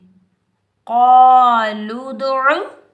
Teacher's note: आइन के ऊपर पेश, बगैर खींचे पढ़ेंगे, आइन को हलक के दरमियान से अदा करेंगे